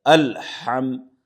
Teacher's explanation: ادائیگی ہا بیچ حلق سے نکالیں گے، تھوڑا سا یہ ہا میں پریشر رہے گا۔